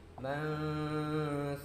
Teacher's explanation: Membacanya disamarkan dengan dengung ya. Membacanya dengan dengung dan disamarkan. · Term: ikhfa hakiki